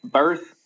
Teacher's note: Birthday, for example. The stress is on birth right there.